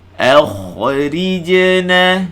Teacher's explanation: Kena nipiskan hamzah, kha tebal, ra ni baca nipis balik.